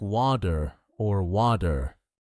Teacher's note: So in American English, you don't hear a hard T. Instead, you hear a soft D.